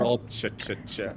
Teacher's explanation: words that start with TR are pronounced like CH